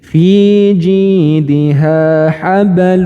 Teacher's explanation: cara mempraktikkannya yaitu dengan dengan dileburkan ya dengan dileburkan terlebih dahulu dimasukkan bunyi Nun sukunnya ke huruf setelahnya kemudian didengungkan dan ditahan panjang dengungannya